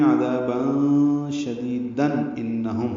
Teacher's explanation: عذابا شدیدا ملانے کی صورت میں عذابا شدیدن انہم ہوگا، اظہار ہوگا، آگے حمزہ آ رہا ہے.